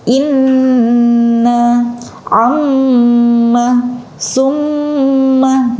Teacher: Kemudian al-khayshum, ya, jadi dari rongga hidung. Jadi kayak berasa bindeng. Nah, itu dari rongga hidung.